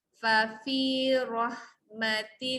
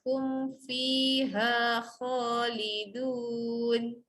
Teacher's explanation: pertama fa pendek, yang kedua fi panjang.